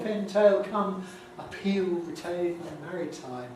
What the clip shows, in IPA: pʰɪn